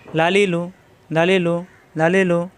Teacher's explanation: জিহ্বার আগার কিনারা উপরের দাঁতের গোড়ায় লাগবে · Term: লাম